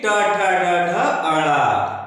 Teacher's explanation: और यहाँ जो सूत्र है कि ऋतु रसाड़ा मूर्धा, यानी कि ट वर्ग का अक्षर है, ट वर्ग का पंचम अक्षर ना। तो ट वर्ग जो है वो मूर्धा से उच्चारित होता है। ट वर्ग के जो भी वर्ण होते हैं वो मूर्धा से उच्चारित होते हैं, मूर्धन्य कहे जाते हैं।